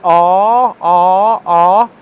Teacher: for ah, ah, the long vowel sound, my lips are completely relaxed. They're unrounded, like that, but they're completely relaxed. If I say ah, ah, ah, it doesn't make a difference if I get my lips and start playing with them because they're unrounded and relaxed. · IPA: /a:/